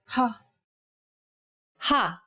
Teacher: For example, the sound of the letter H in the English word hat. Saying this sound involves a forceful expulsion of air.